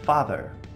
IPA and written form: ˈfɑː.ðɚ (father)